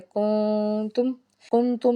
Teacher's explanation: قاعدہ ہے اخفا کا، تو ہم نے آواز کو ناک میں چھپانا ہے